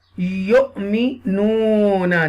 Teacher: Yu'minuna, this ya pe you will connect with the hamza sakina. We will connect with the hamza sakina with a little bit jerk.